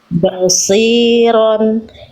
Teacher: Bnya enggak usah bo. Bnya tipis ya. Satnya baru tebal. Jangan bo. Kalau tebalnya udah dari huruf ba.